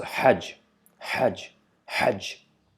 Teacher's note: So this sound, it's just like H. We just need to stress a little bit in H sound to produce it from the middle part of the throat with much amount of air being pushed out from the mouth. Yeah. So we need to make sure that our mouth is wide open and we are producing the H sound from the middle part of our throat.